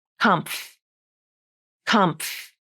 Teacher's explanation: The first syllable has a tricky consonant combination, the MF cluster.